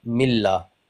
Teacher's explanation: मीला नहीं पढ़ना, मिल्ला। लाम को थोड़ा सा हम डबल अमाउंट में खींचेंगे।